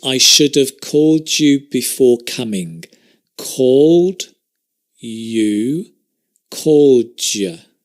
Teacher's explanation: it's sometimes a duh sometimes a ja